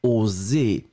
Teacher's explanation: le deuxième donc celui que nous cherchions ici c'est plus fermé et ça descend